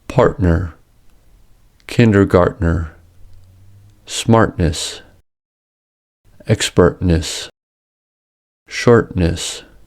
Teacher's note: The glottal stop can also occur when T comes between an R-colored vowel and N.